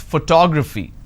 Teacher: four syllables but in this case i stress on the second syllable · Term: word stress